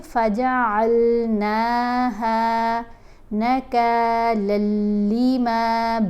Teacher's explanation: اب یہاں پر ہم نے نون کو کھینچ کر پڑھنا ہے، نون کے اوپر کھڑا زبر ہے۔ ہا کو بھی لمبا کر کے پڑھیں گے ایک الف جتنا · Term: حرف مدہ